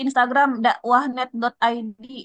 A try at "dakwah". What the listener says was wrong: nggak pakai K, nggak kepake K. Dawa, dawa, dawa.